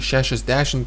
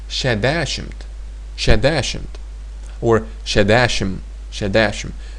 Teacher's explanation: people also shorten those normal numbers by not saying the t